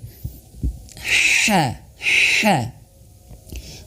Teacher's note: huruf h-nya itu harus benar-benar tipis dan anginnya mengalir